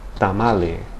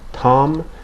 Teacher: in Spanish the tongue is lowered and makes contact against the back of the upper teeth